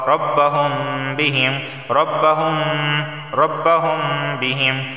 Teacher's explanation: میم ساکن کے بعد اگر با آ جائے تو اخفا میم ساکن کا قاعدہ لاگو ہوتا ہے، لہٰذا یہاں بھی غنہ ہوگا